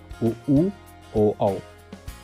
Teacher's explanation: जिन स्वरों के उच्चारण में ओंठ वृत्तमुखी या गोलाकार होते हैं उन्हें वृत्तमुखी स्वर कहते हैं